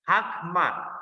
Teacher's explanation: So whenever you are pausing, it will be A, not O.